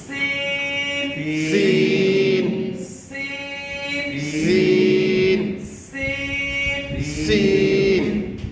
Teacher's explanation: এই হরফটা উচ্চারিত হবে জিহ্বার আগা সামনের নিচে থেকে